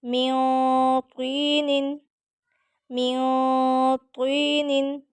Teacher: طا کو پر اور موٹا رکھیں گے